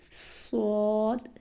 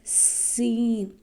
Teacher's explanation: پھر ہے صاد، اس کو موٹا کرنا ہے، اس کا مقابلہ سین سے۔ جب ان پر زیر زبر پیش پڑتے ہیں، صاد کو موٹا پڑھیں گے، سین کو موٹا کریں گے تو صاد بنے گا، صاد کو پتلا کریں گے تو سین بنے گا۔